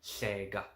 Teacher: You keep that there, and then you sort of blowing out, and then the air comes out on the sides